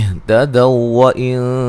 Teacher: جب ملا کے پڑھیں گے تو سختی سے جو ہے دونوں واو کو ایک کر دیں گے، ٹھیک ہے، مشدد کر دیں گے.